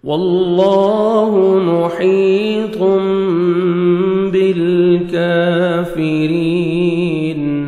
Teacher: تنوین کے بعد باہر ہے، تنوین کے نون کو میم میں چینج کریں گے. بالکافرین، کاف کو باریک پڑھنا ہے، 1 سیکنڈ کھینچنا ہے، کھڑے زبر ہے.